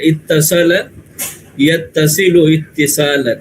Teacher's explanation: یہ واو کو تا میں کنورٹ کر دیا اور دونوں تا کو ملا دیا، یعنی اس کا جو واو تھا وصل کا وہ تا بن گیا، تا بنا دیا گیا اس کو. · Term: تشدید سے مدغم